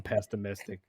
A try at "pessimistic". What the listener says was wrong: You're adding an extra T. No T in the middle. Pessimistic. No T.